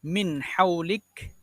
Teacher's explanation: Nun mati bertemu ha. Izhar halqi, tidak dibaca dengung.